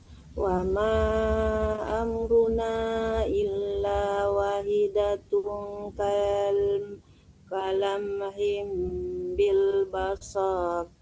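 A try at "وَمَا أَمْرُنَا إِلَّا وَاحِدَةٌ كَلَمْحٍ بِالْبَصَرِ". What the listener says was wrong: Soalnya nggak panjang, coba ulang lagi Bu. Wa ma amruna illa wa-nya panjang ya Bu.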